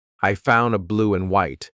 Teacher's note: The word and is being reduced. Just cut off that final D sound.